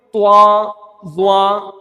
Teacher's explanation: تو ناک سے بھی آواز آتی ہے اور ہونٹوں کو بھی یہ گول کر دیتے ہیں